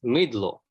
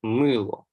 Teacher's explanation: The clusters tl, dl have been conserved which is a common development with East Slavic.